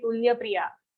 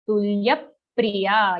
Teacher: Aghat on ya in tulya comes very clearly